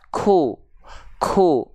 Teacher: kalau huruf Kaf dia punya sifat hams punya keluar nafas sedikit percikan nafas